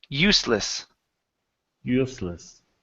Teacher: this S is actually an unvoiced S. So instead of saying useless, it's useless.